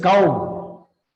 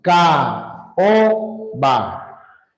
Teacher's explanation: Al darte cuenta que las vocales sucesivas están en sílabas distintas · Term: hiato